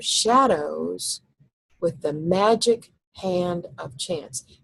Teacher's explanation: the second half of shadows is soft, and with, I don't think really needs an accent